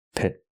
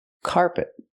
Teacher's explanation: The second syllable is not stressed, it's closed and relaxed.